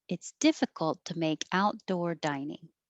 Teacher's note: I did go up on out, didn't I?